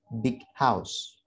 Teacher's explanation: Move into the, di sini adalah suara g. G merupakan salah satu dari plosive consonant ketemu dengan yang merupakan consonant, sehingga g ini tidak kita rilis suara plosifnya.